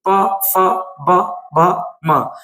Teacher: प वर्ग में दोनों होठ आपस में मिलेंगे। प फ ब म यानी ओष्ठ से इसका उच्चारण होता है।